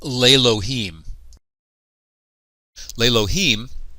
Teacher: In this case, the compound schwa is a hatef sagol, so this causes the initial vowel to lengthen to a sagol. Now when the aleph quiesces, the sagol, a short E-class vowel, lengthens to a tsere, a long E-class vowel.